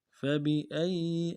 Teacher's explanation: فا کو نرم سے ادا کرنا ہے، با کو بھی نرم سے ادا کرنا ہے، حمزہ کو یا کے ساتھ ملانا ہے، یا کے اوپر تشدید زور دیں گے